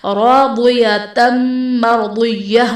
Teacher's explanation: मर्दिय्यह में रा साकिन से पहले हर्फ पर ज़बर है तो यहाँ पर रा को पुर पढ़ा जाएगा